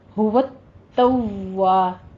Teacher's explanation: توا میں آپ نے تا کے پر بھی تشدید ادا کیجیے اور سختی کرتے ہوئے واو پہ بھی تشدید, دونوں ہونٹوں کو گول کر کے